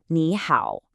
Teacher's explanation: The first syllable rises and the second one does that dip and rise. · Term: tone sanji